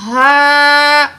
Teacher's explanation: الف سے پہلے زبر ہے، الف مد ہے، 2 پوائنٹ کھینچ کے پڑھیں گے